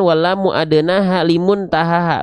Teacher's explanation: huruf lam itu dilafalkan dari samping lidah bagian depan yang kiri, menyusur sampai ke ujung lidahnya, lalu samping lidah depan bagian yang kanan, menyusur sampai ke ujung lidahnya.